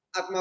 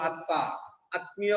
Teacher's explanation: মফলার উচ্চারণ হচ্ছে না কিন্তু ওই পরের বর্ণটা দ্বিত্ব হচ্ছে